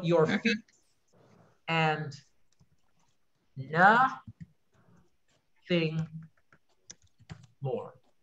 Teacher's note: Your feet, two syllables, unstressed, stressed.